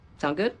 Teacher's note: native speakers will often shorten that just to sound good with a rising intonation